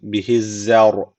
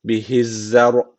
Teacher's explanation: Ra harfi burada cezimli. Öncesindeki harf üstten bağlandığı için ra harfi burada kalın okunması gerekiyor. Çünkü öncesindeki harfin harekesi üstte.